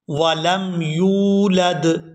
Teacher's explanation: یہاں پر یا کو واو ساکن کے ساتھ ملائیں گے تو کھینچیں گے۔